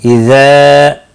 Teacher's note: مد منفصل ہے، 3 الف کے برابر کھینچ کر پڑھیں گے